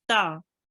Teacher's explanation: we only make this ta just one count long